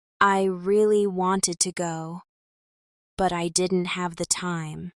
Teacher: Here there's a small pause after go to signal a shift in thought and the second part has a different tone. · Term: thought chunking